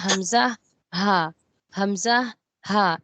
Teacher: حلق کا جو سب سے آخری والا حصہ ہے وہاں سے ہم بولیں گے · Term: اقصی حلق